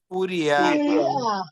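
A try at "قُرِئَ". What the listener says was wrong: কুরিআ। ইয়ার উচ্চারণ আর আর উচ্চারণ পার্থক্য কিন্তু অনেক। একটা হচ্ছে ইয়া আর একটা হচ্ছে আ। এখন যদি শুনতে হামজা উচ্চারণ করতেছেন আপনি, কিন্তু যদি শোনা যায় ইয়ার মতো কুরিয়া, এরকম হলে তো ইয়ার উচ্চারণ হয়ে যাবে।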